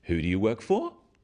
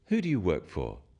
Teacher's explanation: When you ask people questions about themselves in English, use a falling tone. It sounds friendlier.